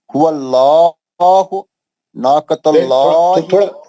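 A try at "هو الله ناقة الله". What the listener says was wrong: نہیں تھوڑا آواز میں ایک دم اللہ کے نام میں آتے ہی آپ ایک دم بلاسٹ کر دیں. ایک دم آواز میں زور پیدا کر دینا.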